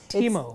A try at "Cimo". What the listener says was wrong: It's C. It's CIMO. it's pronounced Chimo.